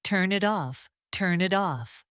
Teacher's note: When Americans say it, the ending N connects to the vowel I and the T in it softens.